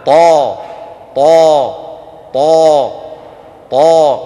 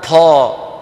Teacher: أيضا الطاء العربية الفصيحة مجهورة هكذا، طا طا طا طا، وليس طا.